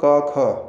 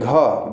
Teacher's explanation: ठीक है, अगर हम क वर्ग की बात करें तो क, ख, ठीक है, क, ख पहला दूसरा आ गया, फिर घ, देखिए घ बोल रहे हैं तो आपका क्या हो रहा है? स्वर तंत्र में कंपन हो रहा है। तो पहला और दूसरा आपका वर्ण हमेशा और हमेशा हर वर्ग का आपका अघोष होता है, ये ध्यान रखिएगा।